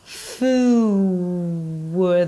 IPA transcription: fu(w)d